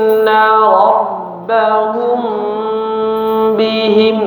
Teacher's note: sama-sama ghunah yang dipanjangkan